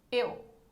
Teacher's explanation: Esse U não é pronunciado com toda a intensidade, por isso que esse U é uma semivogal.